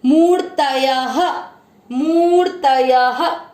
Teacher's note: मूर त पूरा, त में अ मिक्स करेंगे। मूर्तय य में अ की मात्रा है तो विसर्ग को पढ़ेंगे ह।